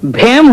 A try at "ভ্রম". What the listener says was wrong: হেম নয়, ভ্রম, এটাতেও রফলা লাগবে।